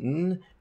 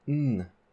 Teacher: the N on the left is your standard alveolar N, and the N on the right is a dentalized N. This means that your tongue is closer to your teeth.